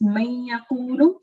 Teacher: It's a very light nasal sound.